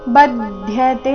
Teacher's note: ಬ ಮೇಲೆ ಆಘಾತ ಮುಂದೆ ಅರ್ಧದ ಪೂರ್ತಿಯ ಇವೆರಡರಿಂದ ಕೂಡಿದ ಸಂಯುಕ್ತಕ್ಷರ ಬಂದಿದೆ